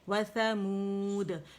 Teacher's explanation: واو ساکن سے پہلے پیش آ رہی ہے تو واو مدہ ہے, دو کاؤنٹ کے لیے آواز گول ہوگی, اسے کھینچیں گے